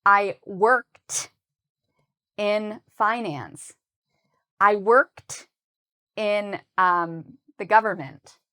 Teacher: when you use ed with work, it sounds like a t sound